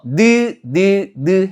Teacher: 혀끝과 윗니몸이면서 코로 공기가 통과하면서 나는 소리고요. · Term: 비음